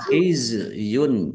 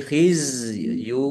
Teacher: za sukun jangan diqalqalahkan, jangan dipantulkan